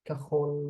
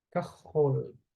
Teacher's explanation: the lamet at the end has no vowel to it